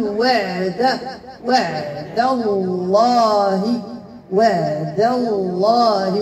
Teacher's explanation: فالله مفخمه لانها مسبوقه بفتح ولكن انتبهنا اخواتي لدي تجاور الحروف لدي الدال مرققه وجاءت بعدها اللام لاسم الجلال مفخمه لا افخم الدال فتصبح ضاضا فادخل في اللحن الجليل لا اقول · لدي الدال مرققة وجاءت بعدها اللام لاسم الجلال مفخمة، لا أفخم الدال فتصبح ضادا فأدخل في اللحن الجلي، لا أقول وعد الله وعد الله، إذا فأصبحت الدال ضادا بل أقول وعد وعد الله وعد الله جماعة وعد الله ممتاز حق.